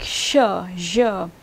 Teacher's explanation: You can see that it's moving, the tongue is moving towards the palatal region, the post-alveolar region of the palate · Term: post-alveolar consonants